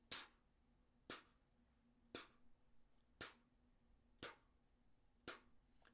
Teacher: If I was to do that without the trumpet, you would hear my air and it goes. So you can hear my tongue and then you can hear a little burst of air that follows that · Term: ta sound